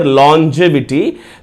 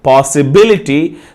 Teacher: the suffix i t y the word the stress should fall the stress should fall on the third syllable from the end